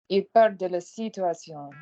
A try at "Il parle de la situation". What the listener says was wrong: Good, but you're desperate to get onto the T. You're desperate to get onto the T. All right, be into the vowels.